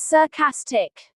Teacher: Sarcastic is pronounced as sarcastic. The stress falls on the second syllable.